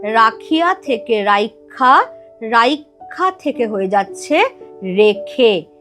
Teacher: এবার আগে থেকেই একটা আ কিন্তু আছে, তাহলে আ আর ই সন্ধি করে হয়ে গেছে এ রেখা। রেখা থেকে এই আটা লোপ পেয়ে যাচ্ছে, হয়ে যাচ্ছে রেখে। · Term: অভিশ্রুতি